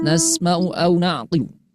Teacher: Tetap sinnya harus kita alirkan bunyinya karena sifat salah satunya sin itu sifatnya al-khawa.